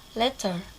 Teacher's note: So, a tap is produced if one articulator is thrown against another, as when the loosely held tongue tip makes a single tap against the upper teeth or the alveolar ridge. In a tap, there is no buildup of air pressure behind the place of articulation and consequently no release burst.